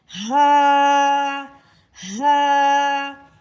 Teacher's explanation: ہا کو ہم نے سینے کے جانب جو آخری حلق ہے ادھر سے اس کی ادائیگی کرنی ہے